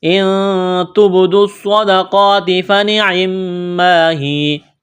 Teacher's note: نون ساکن کے بعد تا ہے، حروف اخفا ہے، تو نون ساکن پر غنہ کریں گے، آواز ناک میں چھپائیں گے